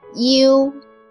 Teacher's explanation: pronounce a shorter e first and then gradually raise your tongue to the position of pronouncing o